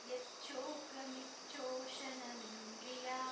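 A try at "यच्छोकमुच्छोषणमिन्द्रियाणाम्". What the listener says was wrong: Yachoka mucho, not micho.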